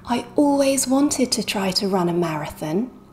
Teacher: always is an adverb so we stress it and the stress syllable is all